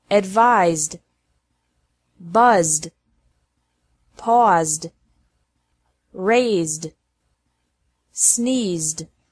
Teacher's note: Ed is pronounced like D after verbs ending with a Z sound.